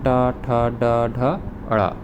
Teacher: वर्ग ट का ट वर्ग में ट ठ ड ढ अड़ इसका उच्चारण स्थान है मुर्धा